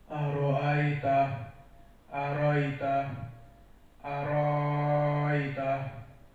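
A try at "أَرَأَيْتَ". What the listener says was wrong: tambah biar 6, beda dengan 4. Itu 4.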